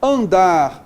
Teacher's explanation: Em bomba, a tônica é nasal. Andar, a tônica é oral.